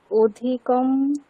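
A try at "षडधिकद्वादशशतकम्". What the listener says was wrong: অধিকম বলবো না, অধিক, কারণ বাক্য তো সম্পূর্ণ হয়নি, তাই না?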